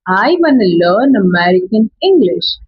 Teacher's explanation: want to becomes wanna. Going to becomes gonna. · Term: connected speech